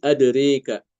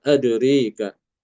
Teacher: Imam Alkisai juga mengimalahkan fathah ro dan alif yang ada pada kalimat adroka. Adroka semua dalam ee semua lafaz adroka di dalam Al-Qur'an ya.